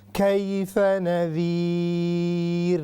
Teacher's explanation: یہ را جو ہے یہ باریک ہوگی, چونکہ را سے پہلے جب یا ساکن آ جائے, یا ساکنہ قبل الرا, then را will be مرقوم یعنی رقیق, پتلی پڑی جائے گی